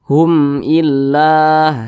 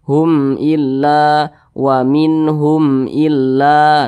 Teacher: semuanya hukumnya adalah izhar syafawi dan dibaca jelas tidak berdengung maka Hum ini dibaca jelas Hum illa seperti itu Hum Illa